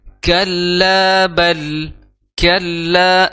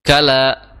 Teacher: di situ ada tasydid, jadi ditahan, ya, jadi ditahan